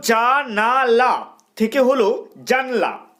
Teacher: মধ্য থেকে একটা আকার বিলুপ্ত হয়ে গেল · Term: মধ্যস্বর লোপের